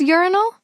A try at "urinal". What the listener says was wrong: It sounds like you're saying rhino.